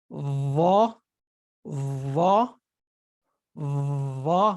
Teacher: Your tooth is not really like strongly on it. It's vibrating off of the upper teeth. And your tongue is on the edge of the upper teeth, maybe slightly if you want after it or slightly before it, inside of it, but not never outside, like never like that. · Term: vibrating letter